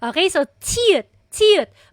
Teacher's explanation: breathy, aspirated po siya